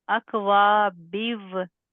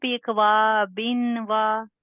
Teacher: मतलब बा और वाव को मिक्स कर रहे हैं ना। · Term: इदगाम